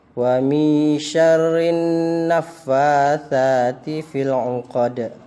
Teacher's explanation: Jadi alif lamnya tidak terbaca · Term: alif lam syamsiyah